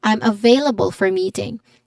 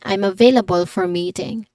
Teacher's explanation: meeting has a stress on the first syllable with a long e sound